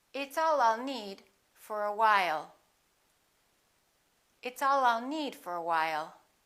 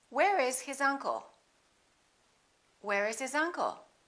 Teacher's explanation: linking the final consonant to the following vowel